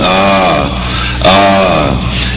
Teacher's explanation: He opens his mouth, he vocalizes, no shaping of the lips, no movement of the tongue, just letting air pass through the throat, comes out the sound ah, ah.